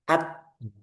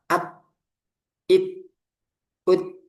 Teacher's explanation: At ini suaranya tertahan at. Pas dilepas baru keluar udaranya. At at ya. Jadi ee syiddah dulu baru hames.